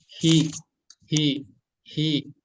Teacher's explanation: Kemudian halki itu tenggorokan. Jadi huruf H besar ini tempat keluarnya dari pangkal tenggorokan atau tenggorokan yang paling bawah. Mungkin untuk bapak-bapak, untuk laki-laki akan kerasa ya di bawah jakun ya, yang ini ya.